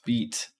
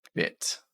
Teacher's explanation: same pronunciation the same place in the mouth beat and bit the only difference is with beat your tongue is tense and in bit your tongue is not as tense in other words it's a little bit more towards the center